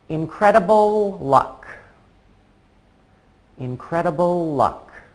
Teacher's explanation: I don't actually have to stop making the L sound at the end of incredible I just say incredible luck keeping my tongue in the same place it's actually much easier than stopping and starting a new word